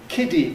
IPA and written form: ˈkɪdi (kiddy)